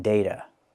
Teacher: And the T is always pronounced with a fast D. Not data, but data.